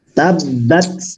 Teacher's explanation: Jadi tak hamesnya tak ketika sukun itu ada desisnya